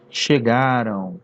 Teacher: aquele M lá no final, na verdade, ele é uma semivogal, ele não é consoante M, ele tem som de U